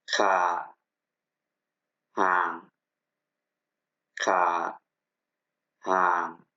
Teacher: Riêng phù âm cao sẽ trở thành như giọng nặng trong tiếng Việt